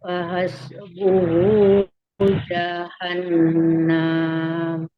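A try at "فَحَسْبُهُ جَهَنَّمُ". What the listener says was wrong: Ya, tidak boleh panjang. Langsung jahannam.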